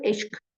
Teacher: sonu q ilə bitən bəzi alınma sözlərdə, yenə də dediyim kimi, q, k kimi tələffüz olunur. Q-ğı əvəzlənməsi baş vermir.